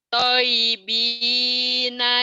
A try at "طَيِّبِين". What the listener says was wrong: toynya kurang nyamber. Toyibin, toyibin, toyibin kurang nyamber.